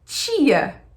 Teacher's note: Em português, a nossa pronúncia do T é normalmente, na maioria dos estados, tch